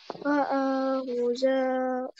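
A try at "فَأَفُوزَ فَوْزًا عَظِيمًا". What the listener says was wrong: Fa'ahuza. U-nya panjang, ada wau-nya. Ulang dari fa'ahu.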